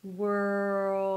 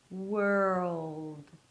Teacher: You need that extra sound of the dark L that will transition from the R to the L. And then you bring the tongue up for the L, so everything's kind of like blended together.